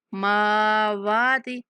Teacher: میم کی آواز ناک میں نہیں جائے گی